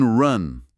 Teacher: o som é o chamado wedge na fonética. É o maxilar bem relaxado, produzindo um som curto do meio da boca, tipo um ran.